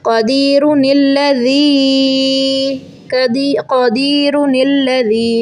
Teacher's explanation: रा को मोटा करेंगे, क़ाफ को मोटा करेंगे, ये हैवी लेटर्स हैं।